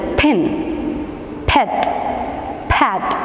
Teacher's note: The lips are tightly closed. It is a bilabial sound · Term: p sound